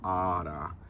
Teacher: where the first alpha is long and the second alpha is short